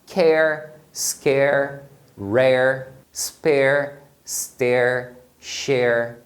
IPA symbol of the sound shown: eər